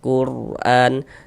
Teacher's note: maka huruf rasukunnya dibaca tebal, dibaca tafkhim, sehingga pangkal lidah kita naik terangkat ke atas ketika kita mengucapkannya. Quran, selain harokat dhammah juga harokat fathah dapat menebalkan huruf rasukun.